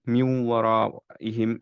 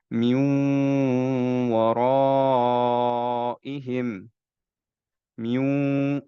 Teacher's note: completely সিন থেকে বাদ কিন্তু আমাদের একটা নেজাল সাউন্ড আসতে হবে ওয়াও নরমালি উচ্চারণ করার সময় কিন্তু নেজাল সাউন্ড নাই কিন্তু এখন আমরা নেজাল সাউন্ড ইউজ করবো